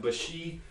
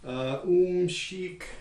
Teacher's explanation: And so at this point, maybe it's apparent that there's something funny going on here, because there's really no generalization in the preceding context at all. But here, all the cases we have of sh are followed by a high front unrounded vowel